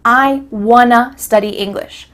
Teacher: Here we're changing want to wanna. Again, the word to changes to a.